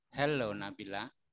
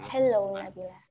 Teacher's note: Nah, helnya yang ditekan bukan lo.